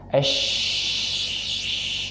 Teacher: Tafasyi adalah pengucapan yang disertai dengan angin yang menyebar di dalam mulut, melabrak dinding-dinding gigi